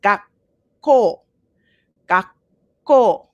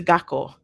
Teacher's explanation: When you have a double consonant, it's like you pause right before the sound, so before the K sound, and then you make that sound. So you pause first.